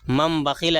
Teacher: نون کو میم سے بدل کر غنہ اور اخفاء کے ساتھ پڑھیں گے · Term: اقلاب